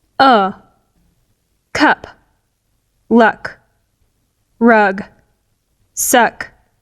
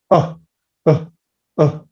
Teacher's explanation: It's mid, it's neutral, and it's central. It's literally in the middle of all your oral cavity. Your lips are super relaxed. To pronounce schwa, you just do this with your hand, then turn it around and say, Okay, that's schwa. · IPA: /ə/